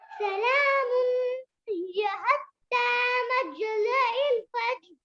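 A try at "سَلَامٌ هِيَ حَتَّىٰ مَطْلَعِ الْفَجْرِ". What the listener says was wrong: मज नहीं है, ता है। मतलइल फज्र।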